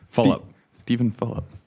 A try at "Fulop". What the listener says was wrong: You're saying it like it's Philip. Fullop. Fulop. Fulop.